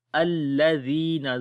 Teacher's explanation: زال کو نرم پڑھیں گے، یا مدہ ہے، لمبا کریں گے